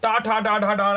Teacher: ये हमारे सब मूर्धा से बोले जाते हैं।